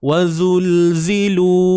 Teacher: Ni pun huruf zai. Ada dua huruf zai tuan-puan. Dua-dua huruf ni lidah tak perlu dikeluarkan. Jangan tertukarlah dengan huruf zal.